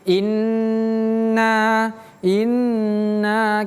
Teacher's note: nun kalau tasydid ditahan agak lebih lama